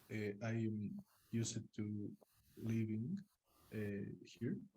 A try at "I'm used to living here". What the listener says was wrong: Pronunciation, you have to say used, no used. Used is not correct when you're pronouncing. Remember, I taught you how to pronounce used, walked, listened. Do not pronounce that vowel. So this this e, you don't pronounce it when you are pronouncing the words.